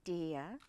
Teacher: der, the vowel is closed, it's long, but it finishes with the turned A, which is the vowel substitute for R